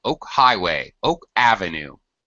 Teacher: Oak Avenue we stress the second word